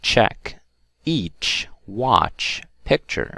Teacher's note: pronounced with the lips forward and round they are unvoiced sounds